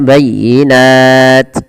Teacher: ketika dia kita berhentikan jadi mad arid sukun karena dia kita wakafkan dan t-nya dimatikan